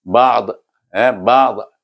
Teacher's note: Bila kita wakaf, kita akan baca ba'd dengan lidah berakhir di tepi lidah di geraham atas. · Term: huruf dad